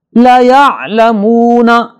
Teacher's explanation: عین کو واضح پڑھنا ہے، نہ حمزہ پڑھیں گے نہ مبہم پڑھیں گے۔ لَيَعْلَمُونَ یہ غلطی ہے، لَيَعْلَمُونَ یہ بھی غلطی ہے۔